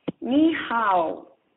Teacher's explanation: Hao is pronounced as one syllable, but the tone requires that you let your voice drop midway and then try it again at the end.